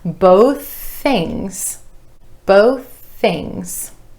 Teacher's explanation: That ending TH, I'm just holding that sound and releasing it into the next word.